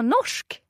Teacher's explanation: Bra, Norsk. So, we've got an R and an S coming together there and they're making a sh sound